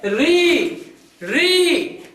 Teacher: देखिए जुबान अंदर की तरफ गई कि नहीं? री, जुबान अंदर की तरफ चली गई और वो मुड़ी हुई जुबान मेरे तालू से चिपक रही है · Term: मूर्धन्य